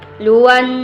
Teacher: Luan wajibu gunnah, kira-kira berdengungnya sekitar 2 harkat.